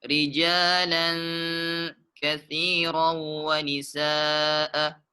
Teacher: Di situ tanwin bertemu dengan huruf kaf. Hukumnya ikhfa hakiki. Jadi dia dibaca dengung.